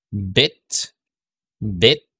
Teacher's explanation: Next is this vowel sound, as in bit, bit. So unrounded siya. Medyo stretch ng konti yung lips natin.